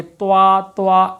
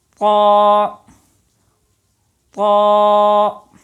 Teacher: آواز اوپر کی طرف اٹھانی ہے تاکہ یہ پر ادا ہو، موٹا ادا ہو، لیکن ہونٹ گول نہ ہونے چاہیے۔ ہونٹ گول ہوں گے تو واو کی آواز پیدا ہوگی، توا توا ایسی آواز ہوگی۔